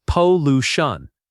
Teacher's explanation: The word pollution has stress on the second syllable.